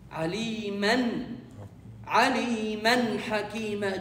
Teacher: Ha came after the tanween. When you continue, you pronounce the tanween as noon, completely a perfect noon.